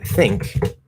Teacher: you're just going to that back end position, which is the ng sound, and then you're instead of releasing that position and maybe getting a little bit of a g, which is possible, but it shouldn't be an actual g sound. · this is the ng sound plus a k